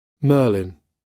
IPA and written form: ˈməːlɪn (Merlin)